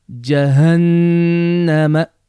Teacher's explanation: make a very clear N or Noon sound and lengthen for 1 second, or we prefer to say 2 beats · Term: Ghunnah